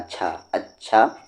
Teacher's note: छ पर तशदीद है इसलिए छ को 2 बार पढ़ेंगे, एक बार पीछे वाले हर्फ से मिलाकर और एक बार खुद उसे। अ को छ में अच्छ, फिर छ के साथ अच्छा, अच्छा।